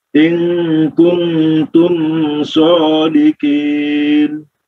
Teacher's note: dua-duanya ikhfa ya, ikhfa. Maka harus ditahan 2 harokat, jangan terlalu cepat